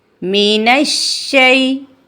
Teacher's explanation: मीम की अदायगी में हठों के खुशक हिस्से को कदरे नरमी से मिलाकर बारीक आवाज में पढ़ेंगे